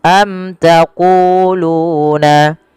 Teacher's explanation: Kemudian belafal mim, jelaskan dia mimnya karena dia bacaan izhar syafawi · Kemudian sama panjang antara ku dengan lu karena ia mad tabi'i.